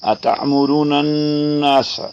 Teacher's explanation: یہاں غنہ ہے نون مشدد ہونے کی وجہ سے